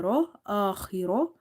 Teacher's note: Kha is heavy because it's from the musta'aliya letters, heavy letters. Ra is heavy because of having fatha.